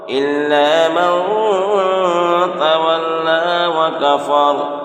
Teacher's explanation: یہاں تولا میں لام کے اوپر کھڑا زبر ہے، اس لیے لام کھڑا زبر علی مدہ کے برابر ہوتا ہے، اس لیے یہاں ایک الف کے برابر کھینچ کر پڑھیں گے